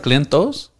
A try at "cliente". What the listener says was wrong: Yeah, with the E at the end.